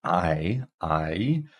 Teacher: we start at the A and then it transitions to I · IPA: [aɪ]